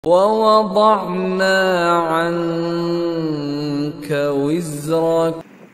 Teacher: Nun mati bertemu dengan huruf ikhfa hakiki iaitu huruf kaf. Jadi nun mati tu kita baca dengan dengung dengan kadar 2 harakat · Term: ihfa hakiki